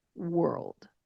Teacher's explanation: Now that L has a dark L sound.